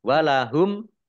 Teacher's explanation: mim sukun bertemu dengan huruf ain idhar safawi dibaca jelas